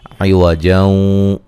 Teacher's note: یہاں نون تنوین کا ادغام مع الغنہ ہے